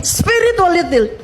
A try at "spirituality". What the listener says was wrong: Spirituality, bukan spiritualitil ya. Itu terdengar jelas di pengucapannya. Tapi yang jelas bahwa harus mengucapkan spiritualitil. Salah. Spirituality, bukan spiritualitil ya. Hati-hati lidahnya ya, jangan gegabah.